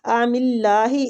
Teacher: اس اللہ کی لام کو بھی ہم نے باریک پڑھنا ہے